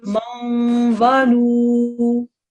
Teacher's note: Okay, this is normally a man, okay? But because it's a wa mushaddad, there's idgham going on, okay? So this is read as a maun, okay?